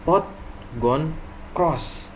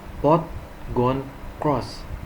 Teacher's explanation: The lips are slightly rounded.